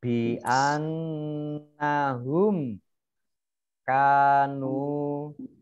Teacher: Zalika zal fathah berdiri mat tabi'i di an ka nun tasdid, dibaca hunah mendengung, ditekan dua harokat. Kemudian mim sukun bertemu dengan kaf, bacaan idhar safawi, dibaca jelas. Bi annahum kanu, kaf fathah alif nun dhammah wawu sukun, ini bacaan mat tabi'i, masing-masing dibaca dua harokat.